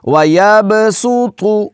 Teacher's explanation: اگر تو کو موٹا کر کے نہیں پڑھیں گی تو یہ تا پڑھا جائے گا